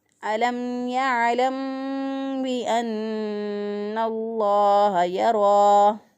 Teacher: اسی طرح اگر کوئی اس کو پڑھ دے یرا پڑھ دے یرا تو غلط ہو جائے گا، کیونکہ را پہ یہاں پہ ہم نے را کو پور پڑھنا ہے